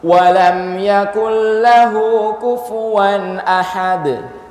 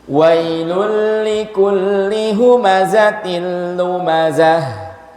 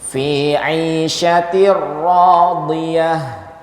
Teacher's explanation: diidghamkan menjadi lam tasydid, menjadi ra tasydid tanpa dikasih gunnah, tanpa didengungkan, tanpa dipanjangkan tempo tasydidnya. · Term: Idgham tanpa gunnah